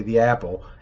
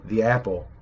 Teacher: when the word apple is paired with other words, sometimes that glottal stop totally goes away. Like if I were talking about a specific apple, I would say the apple, and as you can hear, the apple, that glottal stop is just vanished, but it doesn't change the meaning of the word apple.